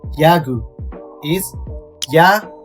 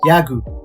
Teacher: if this consonant is used in the second or later letter of the vocabulary it will be a voiced g sound